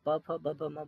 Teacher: इसीलिए दोनों होठ परफेक्ट है तभी आप प, फ, ब, भ, म बोलेंगे। और जब भी आप ये 5 वर्ड बोलते हैं तब हमारे दोनों होंठ जो हैं वो आपस में मिल जाते हैं।